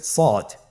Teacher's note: সদ হরফটি পুর হরফ, মোটা হরফ, উচ্চারণের ক্ষেত্রে মোটা করে পড়তে হবে